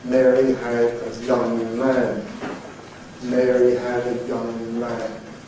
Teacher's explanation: in that sentence, every sound is voiced, so we would be able to perceive the buzzing noise if we were able to investigate our glottis, for example.